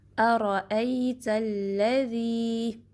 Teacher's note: Verse number 1 میں آپ دیکھ سکتے ہیں ارأیت الذی، حمزہ کو شارپلی پڑھنا ہے۔ حمزہ جو ہے سٹارٹنگ میں اکسل حلق یعنی deep part of the throat سے نکلتا ہے۔ را کو ہیوی پڑھنا ہے، اس میں تکرار آئے گی، ہلکی سی وائبریشن را، ٹھیک ہے۔